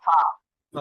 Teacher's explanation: নিচের ঠোঁটের মধ্যখান হইছে দাঁতের গুড়া লাগিয়ে হইল ফা